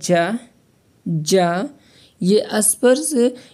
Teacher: ये व्यंजन स्पर्श संघर्षी है